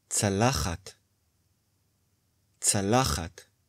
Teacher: plate, צלחת, צלחת. The penultimate syllable is stressed.